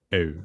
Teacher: yeah, in IPA, but in Norwegian and Swedish, it's just written U. And I usually make it by positioning my mouth like I'm going to make an IPA E, and then saying a U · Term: mid high rounded vowel